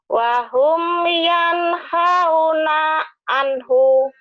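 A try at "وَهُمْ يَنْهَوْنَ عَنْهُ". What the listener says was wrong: Wahum yanhauna anhu. Pendek ya. Anhu. Kalau dihentikan aneh.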